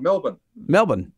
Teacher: so the second syllable is kind of crushed